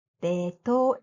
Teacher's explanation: English name Vietnam starts with V sound, but there is no V sound in Japanese. Therefore, it is pronounced Vietnam in Japanese.